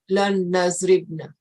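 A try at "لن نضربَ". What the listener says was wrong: Well, he's got the fatah harakat on there. Lan adriba, lan nadriba.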